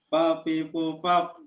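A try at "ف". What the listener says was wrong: Baf af. Jadi giginya kelihatan af, bukan up. Ya kalau up pakai p. Ini af pakai f ya.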